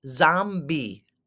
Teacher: The emphasis is on the first syllable.